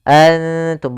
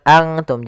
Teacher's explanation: Karena dia ikhfa itu menyamarkan huruf kepada huruf setelahnya. Yaitu nunnya disamarkan kepada huruf ta. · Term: ikhfa aqrab